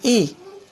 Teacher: छोटी और बड़ी ई, ये आपकी तालब ध्वनियाँ हैं।